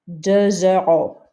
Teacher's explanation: Notice the X sounds like a Z in a liaison. Also notice we don't pronounce this S because it's not part of careful.